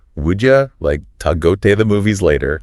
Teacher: would you becomes would ya, to is like ta, and the like disappears before movies.